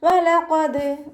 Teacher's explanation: വാവ് ഉച്ചരിക്കുമ്പോൾ ചുണ്ടുകളൊന്ന് വട്ടത്തിൽ പിടിച്ചെടുക്കുക, പല്ല് ചുണ്ടിൽ തട്ടാത്ത രൂപത്തിൽ വെക്കുക കേട്ടോ.